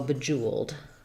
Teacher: In bejeweled, we have second syllable stress, so the Jew syllable will be stressed. That has that oo sound.